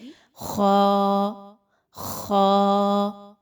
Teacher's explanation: ख जो है वह हलक से ही अदा होता है और हलक के शुरू के हिस्से से जो मुंह की जानिब है गौर करें तो बिल्कुल शुरू के हिस्से से आवाज निकलेगी ख · خا جو ہے وہ حلق سے ہی ادا ہوتا ہے، اور حلق کے شروع کے حصے سے جو منہ کی جانب ہے، غور کریں تو بالکل شروع کے حصے سے آواز نکلے گی خا خا۔